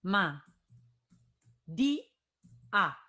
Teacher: Porque la fuerza está en la i